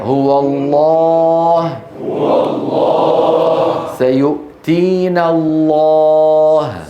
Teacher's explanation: تفخم العرب اللام باجماع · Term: اللام المفخمه